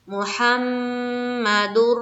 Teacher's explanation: لام میں کھینچیں گے الف مدہ کرتے ہوئے، لا الہ، لام کو پھر کھینچنا ہے، الہ الا اللہ، لفظ اللہ کے لام کو منہ بھر کر پڑھیں گے، الا اللہ، میم میں میم مشدد کا غنہ کرنا ہے